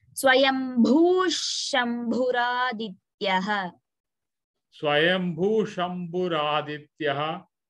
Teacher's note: Visargam followed by sha, ish sound has to come.